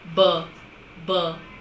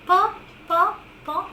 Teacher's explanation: we have the vocal cords vibrating